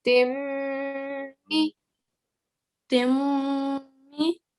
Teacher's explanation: And we're doing that because of the shadda, because there is a meme shadda there, okay? And meme shadda is one of your gunna letters as well. So gunna basically means to give a nasal sound.